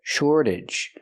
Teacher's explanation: We see the T pronounced like a fast D because it's after an R and before a vowel.